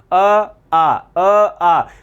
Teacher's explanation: ध्यान रखना विशेष रूप में अ और आ का उच्चारण स्थान कंठ।